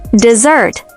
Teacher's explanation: with the stress on the second syllable